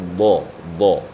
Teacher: Dia caranya terangkat pangkal lidah dan semua lidah merapat ke langit-langit.